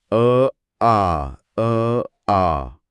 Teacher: म्हणताना तोंड थोड जास्त उघडतय आणि आवाज लांबतोय >> अगदी बरोबर तुमची जीभ आणि ओठ त्याच स्थितीत राहतात फक्त उच्चार लांबतो · फक्त आ म्हणताना तोंड थोड जास्त उघडतय आणि आवाज लांबतोय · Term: सजातीय स्वर